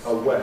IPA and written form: əˈweɪ (away)